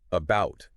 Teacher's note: But then a word like about is about. Second syllable gets the push.